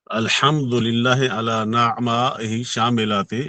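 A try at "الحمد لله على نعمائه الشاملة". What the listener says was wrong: वो आला अला नहीं होता, अलहमद आला।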